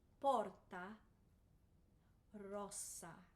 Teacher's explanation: two s's double the time